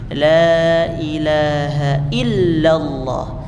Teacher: Inhiraf itu mengalir. Jadi saat kita mengucapkan lam itu ada aliran angin dari pinggir-pinggir lidah kita.